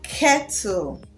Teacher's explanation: When pronouncing the letter K, the inner tongue moves up to touch the upper gum to produce the sound K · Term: K sound